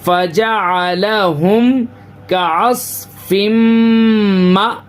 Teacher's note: حمزہ کے اوپر سکون ہے تو یہاں پہ تھوڑا سا جھٹکا دیں گے